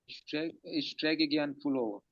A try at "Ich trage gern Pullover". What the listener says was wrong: Ich trage, träge नहीं, trage होगा। Ich trage, Ich trage gern पुलोवर।